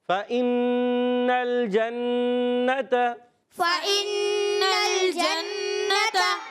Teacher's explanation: اب یہاں نون پر پھر تشدید آ گئی، نون مشدد، ایک الف کا غنہ کرنا ہوگا